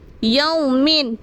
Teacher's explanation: یا واو سب یو میم دو سر مین، یو مین۔ ہمیں یو کو کھینچنا نہیں ہے کیونکہ یہاں پر واؤلین کی قواعد ہو رہی ہے، تو ہمیں واؤلین کو کھینچنا نہیں ہے۔ · ہمیں یو کو کھینچنا نہیں ہے کیونکہ یہاں پر واؤلین کی قواعد ہو رہی ہے، تو ہمیں واؤلین کو کھینچنا نہیں ہے۔ واؤ ساکن سے پہلے صبر ہے، یہاں پر واؤلین ہو رہا ہے، تو ہمیں یہاں پر بغیر کھینچے پڑھنا ہے یومن، اور وقف کر دیں گے ہم تو یوم، دو زیر کو ساکن کر دیں گے یوم۔